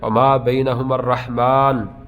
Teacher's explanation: رحمان پہ پہنچ کے آپ کا سانس ٹوٹ گیا تو آپ نے نون کو ساکن کر دینا ہے